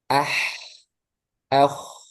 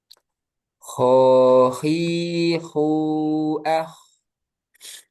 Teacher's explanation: huruf kho atas tenggorokan. Adnal halki. Kho juga tebal. Sama sebenarnya dengan ha dari sisi mengalirnya.